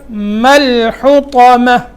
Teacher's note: میم کو لام سے ملانا ہے، آگے ہا اور اس کے بعد طا حرف موٹا ہے